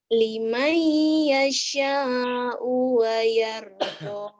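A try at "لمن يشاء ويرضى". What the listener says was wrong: Masih ketahan. Limai yasha wayardo. U-nya jangan ditahan. Wayardo. Wayardo. Masih ya, masih ketahan ya. Agak kagok. Liman yasha'u wa yarda, liman yasha'u wa yarda, wa yarda, wa yarda gitu.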